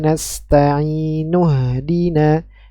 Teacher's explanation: Jangan dibaca Hamzah wasalnya tapi dianggap tidak ada